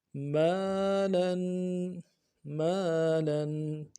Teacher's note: لام دو زبر لن، تنوین ہے، ایک الف مدار میں غنہ کو کھینچنا ہے